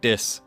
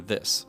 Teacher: many speakers of Hawaii Creole say T or D instead of the th sounds